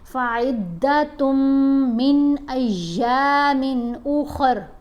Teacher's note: تا کو میم سے ملاتے ہوئے غنہ کریں گے